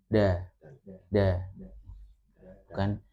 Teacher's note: Jadi menyentuhnya sebentar, menyentuh langit-langitnya untuk mengucapkan huruf dal itu sebentar.